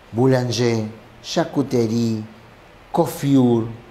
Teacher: En el francés, todas son agudas.